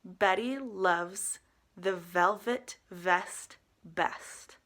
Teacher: a V being a voiced sound using your top teeth against your bottom lip